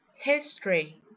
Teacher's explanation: In fact, we will skip the vowel as we say history. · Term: elision of vowels